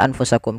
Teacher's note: Adanya nun sukun bertemu dengan huruf fa, yang dimana nunnya disamarkan ke huruf fa. Nunnya disamarkan ke huruf fa, jangan diganti. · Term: ikhfa